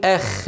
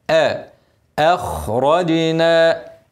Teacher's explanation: الخاء حرف مفخم ورقق الهمزه بقى قبله